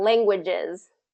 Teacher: we want to make sure that languages has that voice Z at the end, kind of languages.